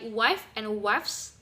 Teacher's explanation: the air is not blocked at any points, and therefore there is no plosion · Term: fricative